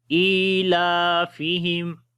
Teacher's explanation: حمزہ کو لمبا کریں گے، اس کے نیچے کھڑی زیر ہے ، لام کو بھی لمبا کریں گے، اس کے اوپر کھڑی